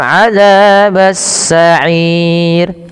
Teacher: Nah, pada lafal ro sendiri ada hukum tajwid juga berupa ro tarqik. Ro yang dibaca tipis tidak dibaca adabasir.